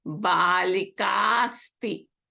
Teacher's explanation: balika ends in a. Asti begins with a, so this becomes a long a. · So this a and ka combine and becomes a long ka.